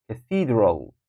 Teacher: Cathedral, that will be the second syllable, is taking the stress.